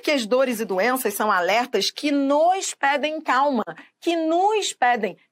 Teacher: Todos os nós aqui, quando pronunciados, eles são tão átonos que eles passam a ter o som de U. O O passa a ter som de U. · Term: monossílabo átono